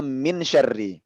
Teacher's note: Lihat di sini ayat kedua, nunnya botak kan, nggak ada tanda apa-apa, berarti nunnya itu bergabung dengan shin suaranya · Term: dengung